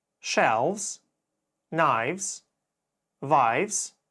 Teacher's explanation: Как ты мог заметить, окончание V и S в данном случае приобретает звук Z.